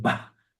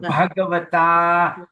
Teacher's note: BH is an aspirated B, we call it. So you must pronounce it bah.